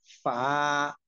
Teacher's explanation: নিচের ঠোঁটের পেট সামনের উপরের দুই দাঁতের আগারের সঙ্গে লাগাইয়া